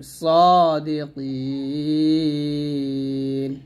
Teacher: এখানে সাদি না বলে সদ মোটা করবেন